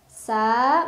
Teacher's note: karena ada alif sebelumnya fathah, dibaca panjang dua harokat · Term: mad tabi'i